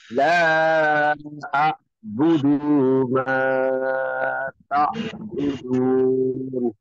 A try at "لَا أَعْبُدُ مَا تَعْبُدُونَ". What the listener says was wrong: এই যে লা আ'বুদু, দু টান হবে না, লা আ'বুদু, কারণ আমরা জানি হরকতের উচ্চারণ তাড়াতাড়ি পড়তে হয়, আমাদের এটা মনে রাখতে হবে।